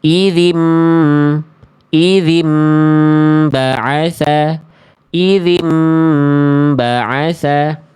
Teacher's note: Harus nun sukun dan ketemu ba iklab itu ditahan terlebih dahulu.